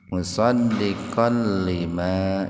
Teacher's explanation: Membacanya itu dimasukkan, diidghamkan ke lam tanpa mendengung. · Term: idgham bila guna